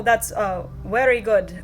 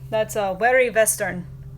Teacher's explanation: some Germans have a V sound instead of W because their W sound is pronounced like an English V